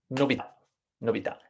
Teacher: But yes, if we have an accent, so if we add the grave accent, the accent decides that the stress is at the end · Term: stress on the last syllable